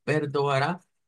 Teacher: termina en a y la a es la que lleva el acento